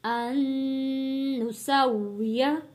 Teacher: عِظَامَهُ بَلَى قَادِرِينَ عَلَى أَن نسویہ، یہاں پہ ایک نون ساکن ہے اور ایک نون مشدد ہے، تو ہم نے یہاں پہ نون ساکن کے ساتھ حمزہ کو نہیں جوڑنا، حمزہ کو جوڑیں گے تشدید والے نون کے ساتھ، یعنی کہ نون مشدد کے ساتھ غنہ ادا کریں گے۔